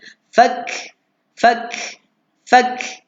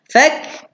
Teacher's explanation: Kaf ni bila dia mati, dia hanya meninggalkan angin je.